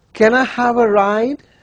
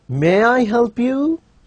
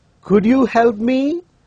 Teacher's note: this is a polite request, and we are using a rising tune here. We are not using a falling tune.